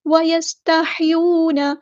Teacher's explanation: ساکن پہ اظہار شفوی ہو رہا ہے، ٹائم نہیں دینا، وَيَسْتَحْيُونَ، سین کی سیٹی ہم واضح کریں گے، ہا کو غصہ لیکن مڈل تھروٹ سے ادا کریں گے ، واو مد آ گئی ہے تو مد اصلی کریں گے،